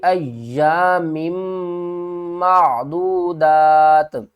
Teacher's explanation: وقف کی صورت میں دو زیر کو ڈراپ کر دیں گے اور دال کو 3 الف مقدار کھینچ کر تا کے ساتھ ملا دیں گے